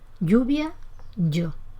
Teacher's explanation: El hablante yeísta pronuncia todo exactamente igual, tanto si se escribe con L, con doble L o con Y.